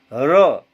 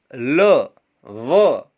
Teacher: इनको जब बोलते हैं तो हमारी जीभ कहीं भी टकराती नहीं है। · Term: अंतस्थ व्यंजन